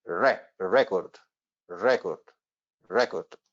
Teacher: it means that the stress goes right onto the first syllable